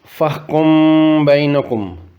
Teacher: تھے دوئی صورت یا ہوئی سکنی کہ اگر کسے کلمے وچ میم ساکن تھی بعد حرف با اچھے با، تو اس میم کی دو حرکات نے برابر لمبا کرساں اور اخفا کرساں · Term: اخفاء شفویہ